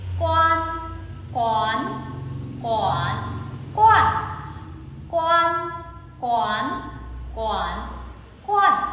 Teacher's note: Quan đọc gần giống như là o a n trong tiếng Việt ấy, sự u nó hơi nghiêng về o một chút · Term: âm mũi